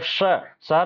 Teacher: जब शहर वाला स बोलते हैं तो जीभ हल्का सा मुड़ करके तालू को टच करता है, इसलिए तालव्य स बोला जाता है।